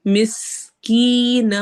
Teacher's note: مس سین میں سٹی والی آواز آئے گی، کی میں یا مدہ ہو رہا ہے، نو تنوین جو نون کی تنوین ہے اس کو واو سے ملانا ہے، ہونٹ گول کرنے ہیں۔